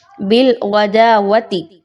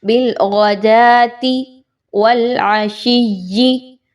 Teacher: اب اس میں لوگ کیا غلطی لاحق کرتے ہیں، بالغداوتی، تیزی میں پڑھ رہے ہوتے ہیں تو واو کے اوپر زبر لگا دیتے ہیں۔ یاد رکھیے یہ واو یہاں پر نہیں پڑھی جا رہی، سائلنٹ ہے، آپ نے اس کو نہیں پڑھنا